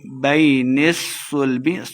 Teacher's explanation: صاد مشدد ہے، موٹا کر کے پڑھیں گے، نون کو صاد کے ساتھ ملا کے پڑھنا ہے